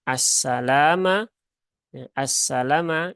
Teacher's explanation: di sini lamnya pendek ya lamnya pendek Jangan dibaca panjang